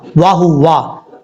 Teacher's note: واو کو پڑھتے وقت ہونٹ گول کریں گے